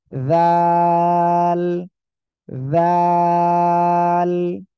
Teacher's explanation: জিহ্বার আগা, এই দুই দাঁতের আগার সঙ্গে লাগান, লাগিয়ে উচ্চারণ করবেন আর 3 আলিফ টেনে পড়তে হবে